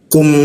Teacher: Ku ada hembusan udara ketika membacanya